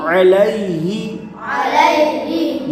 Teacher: رسولی ہی، رسولی ہی، حمزہ زیر ای، حمزہ زیر ای، لام یا زبر لی، لام لا زبر لی، الی، الی، ہا زیر ہی، ہا زیر ہی، الیہ، الیہ، یا کے اوپر جزم ہے، یا ساکن ہے، یا ساکن سے پہلے زبر ہو تو یا لین ہوگا۔ حرف لین کو بغیر کھینچے بغیر جھٹکے دیے نرمی سے معروف پڑھیں گے